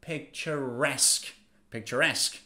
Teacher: again pay attention stress is on the last syllable